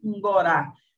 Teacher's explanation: esse som produzido como uma pré-nasal, aqui a gente tem a pré-nasalização, a oclusão aqui para a produção da oclusiva.